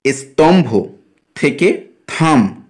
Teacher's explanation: পরিণত হয় যেমন স্তম্ভ থেকে থাম এখানে দন্তস লুপ্ত হচ্ছে এবং পরবর্তী ভ এর প্রভাবে পূর্ববর্তী অল্পপ্রাণ ধ্বনি ত থ নামক মহাপ্রাণ ধ্বনিতে পরিণত হচ্ছে